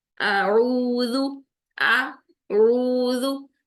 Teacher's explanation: आइन को हमने वस्त हल्क में रखना है,